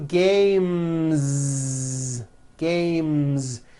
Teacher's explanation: sound M which is a voiced consonant so because of that when you add an S the S should also be voiced